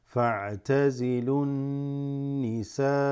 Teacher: the noon also has a gunna sound where the nasal, there's a slight vibration of the nose